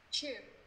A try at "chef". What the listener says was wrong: Đừng chip là gì? Phải nghe thành như chip. Chef. Đừng xếp em sờ. Mọi người nhớ thật ra từ này từ tiếng Pháp. Tiếng Pháp cho người ta là shh. Giống như là chữ shh, im lặng.